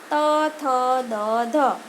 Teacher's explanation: જેમ કે ત બોલીએ ત એટલે હવા આપણી જીભ એ દાંતને અડી જાય અને હવા ત્યાં અવરોધાઈ જાય એટલે એવા દ્વારા બોલાતા ધ્વનિ ત, થ, દ, ધ. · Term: દંત્ય